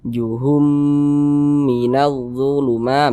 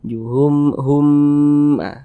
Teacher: Jadi kita dengungkan juhum, humnya itu kita tahan, kita panjangkan sejenak. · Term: idgham mimi